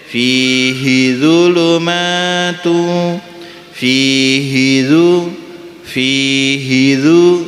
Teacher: hidzu langsung masuk karena hi-nya pendek